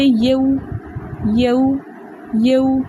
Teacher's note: واو لین کو 1.5 حرکت کی دیر لگا کر نرمی کے ساتھ پڑھتے ہیں